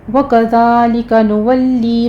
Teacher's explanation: لام کو آپ نے موٹا نہیں کرنا، اس کو باریک ہی رکھیے گا، تشدید ادا کرنی ہے صرف، اور آگے یا مدہ ہے 2 کاؤنٹ کر لینا ہے.